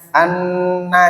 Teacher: anna dibaca dengung 1 alif, dinamakan idgham bi gunnah sebab nun sukun bertemu nun. Kalau tidak ada nun sukunnya anna ini namanya gunnah musyaddadah.